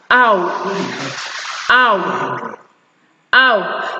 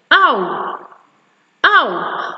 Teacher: your lips actually change from a neutrally open position to a slightly rounded position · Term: ow sound